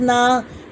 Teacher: الف سے پہلے نون کے اوپر زبر ہے، اسے ایک الف کے برابر کھینچا جائے گا